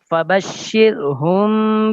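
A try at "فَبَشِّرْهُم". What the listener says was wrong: शेर नहीं, फबश्शिर, शीर, शेर और शीर फर्क है ना।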